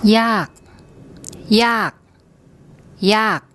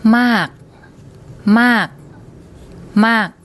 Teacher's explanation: there's not a lot of emphasis on that final unreleased consonant, not like there would be in English.